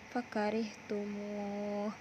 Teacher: Selanjutnya tanda lingkaran warna hijau, tajwidnya adalah mad arid bisukun, dibaca panjang satu alif atau dua setengah alif karena huruf mad tabi'i sesudahnya ada wakaf